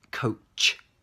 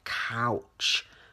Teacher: Coach, think of a coat, your tongue comes to the roof of the mouth, touches the roof, coach, and then it comes apart, coach. And coach is like an O sound. The mouth is like closed. Whereas couch, wide